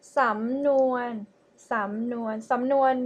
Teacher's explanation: the first syllable is rising tone, and the second one is mid tone